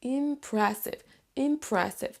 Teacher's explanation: Là ici on a l'accent tonique, donc là on va appuyer, on va prononcer plus fort la syllabe numéro 2